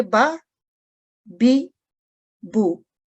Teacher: जैसे कि हम देख सकते हैं कि बा के ऊपर फतह है तो फतह, इसको बा को हम सिर्फ जस्ट 1 सेकंड के लिए पढ़ेंगे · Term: मुख्तसिर हरकत